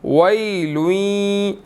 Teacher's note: या मुशद्दिद है, गुन्ना करेंगे